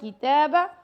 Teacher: کاف کو کی کر کے پڑھنا ہے اور تا کو 2 سیکنڈ تک لمبا کرنا ہے، با کو لمبا نہیں کرنا۔